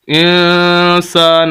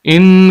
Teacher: آپ نون پر اخفا کر رہے ہیں، نون کی آواز کو چھپا رہے ہیں، ان نہیں کر رہے، ان کریں گے ناک میں آواز آئے گی تو یہ غنہ ہو جائے گا۔